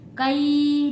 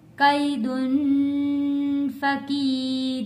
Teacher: या साकिन से पहले जबर है, हरूफे लीन है, जल्दी और नरमी से पढ़ेंगे।